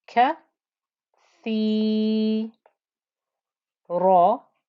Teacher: nice and heavy, thick and heavy for the ra with the fatha